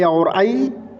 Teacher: ए और आई कंठ और ताल से बोला जाता है